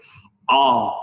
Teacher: C'est un A postérieur, c'est ici, dans cette partie de la gauche. A, c'est très grave et ouvert.